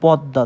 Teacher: এখন মোটা যদি শব্দের শেষে যুক্ত অক্ষর অবস্থায় থাকে, যেমন পদ্মা, দেখুন শেষে যুক্ত অবস্থা আছে, তার মানে এই পদ্মার উচ্চারণটা কেমন হবে, অর্থাৎ দ্বিতীয় উচ্চারণ হবে। এই দটা মোর সাথে যুক্ত অক্ষর অবস্থায় থাকার জন্য এই দ দুইবার উচ্চারণ হবে, তার মানে এর বানান হবে হচ্ছে দা, এবং দটা হচ্ছে শেষের দর উপরে হচ্ছে চন্দ্রবিন্দু অবস্থা থাকবে এবং মাঝখানের দটার হস চিহ্ন বসবে।